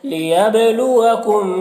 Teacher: لیبلوکم با میں قلقلہ ہوگا